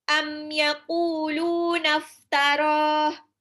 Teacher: Ada udara yang mengalir dari sela-sela gigi seri atas dengan bibir bawah. Jadi kayak ada getaran, coba dirasakan. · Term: fa